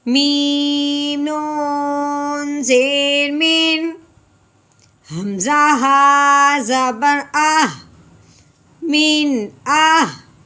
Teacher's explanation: نون ساکن کے بعد آگے حمزہ حروف حلقی میں سے ہے تو اس لیے نون ساکن میں غنہ نہیں کریں گے بلکہ بغیر غنے کے اظہار کے ساتھ پڑھیں گے